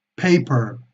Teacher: son bilabiales presionando ambos labios lo vamos a hacer con mayor fuerza con mayor explosión